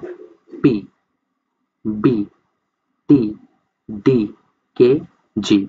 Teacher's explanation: প্লজিভ হইতেছে to produce a plosive consonant, a complete closure at some point in the vocal tract is made. মানে হচ্ছে গলা থেকে শুরু করে মুখের বাইরের অংশ পর্যন্ত যে কোনো একটা জায়গায় একটা বাধা তৈরি করবে, কমপ্লিট ক্লোজার, ঠিক আছে, কমপ্লিট ক্লোজার।